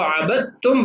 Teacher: یعنی دال نہیں پڑھتے، عین با اور 2 تا اور میم پڑھتے ہیں۔ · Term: ادغام